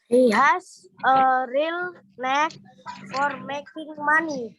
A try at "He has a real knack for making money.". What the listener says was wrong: Yes, very good. Maninya betul pengucapannya.